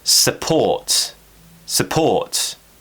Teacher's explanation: Stress is on port, so we're relaxing the first syllable.